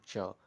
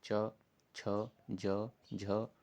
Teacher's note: आपकी ज़बान जो रहेगी ऊपर वाले तालु से टच करेगी, इसलिए इसको तालव्य वर्ण कहते हैं।